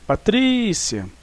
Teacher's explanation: nós temos a penúltima sílaba tá mais forte · Olha só, dividimos a palavra em sílabas. Nós então vamos achar a sílaba tônica, é o tri